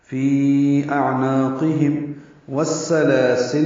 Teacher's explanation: فی اعناقہم والسلاسل میں واو کو سین سے ملائیں گے، سین باریک، لام پر کھڑا زبر دو حرکات لمبا کریں گے، لام معروف طریقے سے پڑھیں گے.